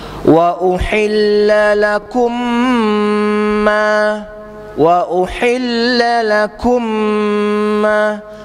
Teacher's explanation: Idgham mislain. Jadi kita baca tutup mulut rapat. Kemudian mim tu yang ada tanda syaddah dua harakat tetap juga.